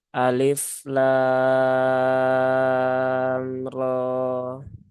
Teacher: perpindahan ya antara lam dengan menuju rok itu tidak ada penekanan sedikit pun ya. Karena di sini ya lam di sini dia masuknya adalah mad lazim mukhafaf harfi ya.